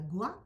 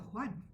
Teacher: Falta la N final y hay que aspirar la primera letra.